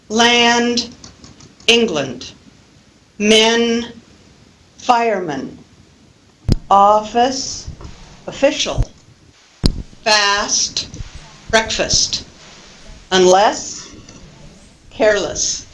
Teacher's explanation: Listen to the difference between land and lund, as in the word England. So we have an unstressed syllable, the second syllable of the word England, and the unstressed vowel schwa. Other examples, men, so we have the stressed vowel e, and then when we look at the compound word fireman, we have the unstressed vowel schwa.